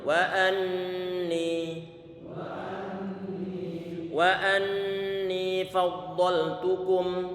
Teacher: nunnya di situ bertasydid, maka dia termasuk bacaan gunnah, dan gunnahnya gunnah yang paling sempurna, paling lama penahan suara gunnahnya, suara dengungannya.